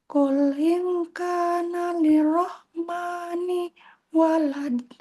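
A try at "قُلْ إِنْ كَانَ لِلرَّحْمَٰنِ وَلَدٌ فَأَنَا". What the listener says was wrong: Kul ingkana lir itu ditekan. Lirrahmani terus sampai fa'ana. Berhentinya di fa'ana. Ya, semua tulisan ana nanya jika terpaksa wakof tetap dibaca.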